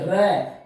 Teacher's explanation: अपन इस परकंपित व्यंजन को बोलेंगे ना तो हमारी ये जो जीभ है इसमें कंपन होगा